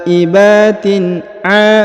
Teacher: Jadi tanwin ini bertemu dengan a, tidak dibaca dengung dan samar ya, tetap dibaca jelas